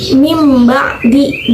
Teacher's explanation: nun matinya itu tidak terdengar jelas, tidak terdengar sama sekali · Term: iqlab